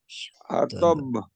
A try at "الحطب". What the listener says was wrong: হ্যাঁ এখানে চাপ দেওয়া যাবে না, حطب চাপ একেবারে এরকম আরকম, حطب